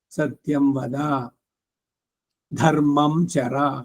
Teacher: ಸತ್ಯಂವದ ಅನ್ಬೇಕಾದರೆ ದ ಮಹಾಪ್ರಾಣ ಅಲ್ಲ ಅಲ್ಪಪ್ರಾಣ ಇರಬೇಕು